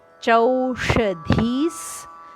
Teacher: ಧೀಯ ನಂತರ ಬರುವ ವಿಸರ್ಗ ಅದು ಸದಂತೆ ಉಚ್ಚಾರಣೆ